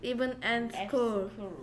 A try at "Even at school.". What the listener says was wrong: Any 아니고 at school. 네, 혀 운동이 좀 필요한 것 같아. Even at school.